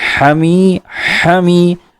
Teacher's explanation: حا حلق کے بیچ والے حصے سے